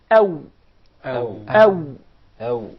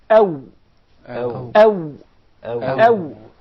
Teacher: the waw is articulated by forming a circle of the two lips without the two lips meeting completely. So there is an air stream coming out of the mouth through the two lips.